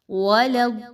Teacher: लाम ज़बर या लई, या लीन दो हरकत के बराबर लंबा करेंगे। वलद्दालीन, लाम को दाद के साथ मिलाते हुए मजबूती के साथ मिलाएंगे